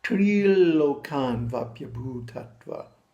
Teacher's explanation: tril is held with the tongue on the top of the mouth for 2 beats.